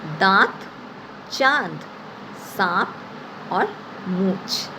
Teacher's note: चंद्र बिंदु का उच्चारण हम मुंह और नाक दोनों से करते हैं